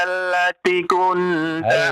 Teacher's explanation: Allati dipanjangkan 2 harokat ya.